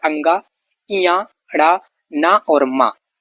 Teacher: तो ये नासिक्य होता है। नाक से इनका उच्चारित होता है